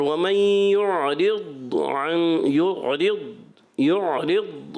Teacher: ضاد کے ادائی کی صفت استعلاء بھی ہے اطباق بھی ہے. یعنی ایک تو پر ہونا اور ایک ایکسٹرا پر ہونا.